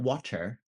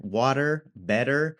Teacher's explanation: that soft curly R sound that you're hearing there, water, better